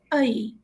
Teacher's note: الف کا زبر ہم پہلے ادا کریں گے اور اس کے بعد یا کا لین اسے دیں گے